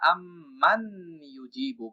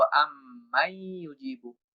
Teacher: দ্বিতীয় উদাহরণ যদি আমরা দেখি, আম্মান ইউজিবু ছিল, নুন সাকিনের পরে ইয়া আসছে যেটা ইদগামের হরফ। তখন আমরা এই নুনকে উচ্চারণ না করে বরং নুনকে আমরা ইয়ার ভিতরে ইদগাম করব এবং ইয়াটাকে আমরা দুইবার উচ্চারণ করব। ফলে এই নুনটার উচ্চারণ হবে না, মিমটা সরাসরি ইয়াকে ধরবো এবং অ্যারাবিয়ান কোরআন বা অ্যারাবিয়ান ফন্ট অনুযায়ী এখানে কোনো তাসদিদ থাকে না। · কারণ ইতিপূর্বে আমরা বলে আসছি নুনটা ইয়ার সাথে মিলে যাবে বা যুক্ত হবে, এটাকেই বলা হয় ইদগাম